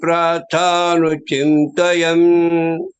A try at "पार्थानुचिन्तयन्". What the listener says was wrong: Prartha means prayer, prarthana. It's Partha, it just addressing Arjuna. You have to be careful about it. He's addressing Arjuna as Partha. You said Prartha. Partha. Partha. He's addressing Arjuna, Partha.